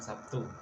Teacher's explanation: B berubah menjadi P sebagai akibat perubahan bunyi t yang tak bersuara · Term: asimilasi